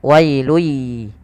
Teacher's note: Maka awalnya wailun dengan bunyi n, kemudian karena bertemu ya masukkan ke ya sehingga bunyinya langsung ke ya. Wailui. Langkah kedua yaitu ditahan gunnahnya dalam ya-nya. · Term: idgham bi gunnah